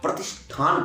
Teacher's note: दंत सा था। और दंत सा जैसे ही मूर्धन्य सा में परिवर्तित हुआ तो क्या हुआ? था स्वाभाविक ही ठा में बदल गया।